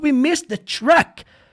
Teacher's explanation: você não vai ouvir esse Ed aqui na fala dele ele fala we Miss The Truck como se nem tivesse o · Quando você junta missed com the, vai ficar missed the. Você não vai nem perceber que o verbo tá no passado. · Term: pronúncia conectada